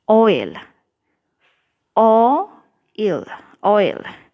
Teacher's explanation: आ एक साउंड के साथ दूसरा साउंड आपको ग्लाइडिंग दिख रहा होगा ना, कि 2 समझ में आ रहा होगा ये सुनने में ही कि 2 वाउल साउंड्स आ रहे हैं. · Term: ग्लाइडिंग वाउल्स